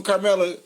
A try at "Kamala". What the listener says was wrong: She says Kamala. No R. Kamala. Kamala.